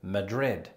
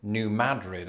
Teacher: In other words, like many people, I've been pronouncing it just like the Spanish capital, Madrid. But for the locals, it's not just a pronunciation shift, but one of emphasis. They emphasize the first syllable, as in New Madrid, and this is an example of a shibboleth.